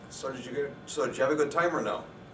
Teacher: it has falling pitch it's a yes no question